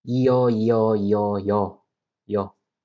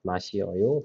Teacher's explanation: when E and O is together, the pronunciation is 여.